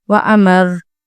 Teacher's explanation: Second example है व अमर, आगे वक्फ व अमर। वक्फ की सूरत में रॉ पुर पढ़ी जाएगी और वाइब्रेशन भी होगी